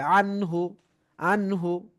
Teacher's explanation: এখন বলবে যে তাজবিদ বলেন, তখন বলতে হবে এই দেখেন নুন সাকিন আসছে, নুন সাকিনের পর এজারের হরফ হা এসেছে, তাই এখানে গুন্না ছাড়া স্পষ্ট পড়তে হবে। আনহু, আনহু, কোনো গুন্না হবে না, স্পষ্ট পড়তে হবে, এজার করে পড়তে হবে।